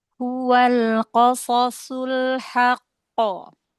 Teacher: Ya, lam sukun ditahan lagi sedikit.